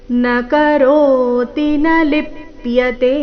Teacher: ನ ಕರೋತಿ ಈ ರೀತಿ ತೀನ ದೀರ್ಘ ಮಾಡಬಾರ್ದು, ರಸ್ವ ದೀರ್ಘಗಳ ಮೇಲೆ ಗಮನ ಕೊಡಬೇಕು. ನ ಕರೋತಿ ರೋ ದೀರ್ಘ, ನ ಲಿಪ್ಯತೆ ಕೊನೆಯತೆ ದೀರ್ಘ.